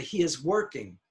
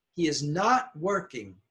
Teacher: not is usually louder than the verb